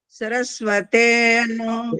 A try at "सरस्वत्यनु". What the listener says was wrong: देखो, फिर वो ते, ये साउंड निकालते हो।